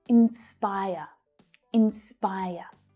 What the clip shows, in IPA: ɪnˈspaɪər